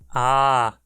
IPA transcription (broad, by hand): aː